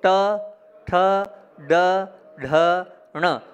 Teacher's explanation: अभी डायरेक्ट नहीं निकलेगा बोलो ट ठ ड ढ ण तो जीभ कहां जा रही है पीछे जा रही है वो वाला ण है नल का न नहीं है आपने पूरा शब्द ही बदल दिया आपने न कर दिया आपने